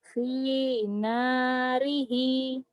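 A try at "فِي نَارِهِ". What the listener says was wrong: Finarihi. Ujungnya panjang. Finarihi. Tapi nanti kalau baca baca Quran ini salah ya baca gitu ya. Kalau dihentikan finarih panjang.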